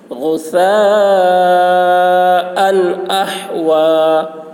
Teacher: یہاں حمزہ میں دو زبر ہے، یہاں اظہار ہوگا، تنوین کو جلد ادا کریں گے، تنوین کو ظاہر کر کے بلا غنہ کے جلد ادا کریں گے